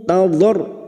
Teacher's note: Nahu tadarru'au, tadar huruf dad yang memiliki sifat yang tidak dimiliki oleh huruf lain, yaitu sifat istithalah. Tepi lidah nempel pada gigi geraham atas, boleh kiri boleh kanan. Tadar, dan masuk pada huruf ra yang bertasdid, hanya masuk tanpa ditahan lama-lama, tanpa mendengung, hanya masuk.